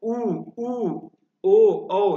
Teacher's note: उ ऊ ओ औ सभी में क्या है आपका मुख जो है वृत्त के समान बन रहा है वृत्त मुखी इसे इसको बोलते हैं वृत्त के आकार के समान